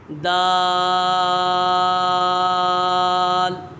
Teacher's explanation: دال، یہ حرف نطعیہ ہے، اس کا مخرج ہے زبان کی نوک اور اوپر کے دانتوں کی جڑ سے ادا ہوتا ہے۔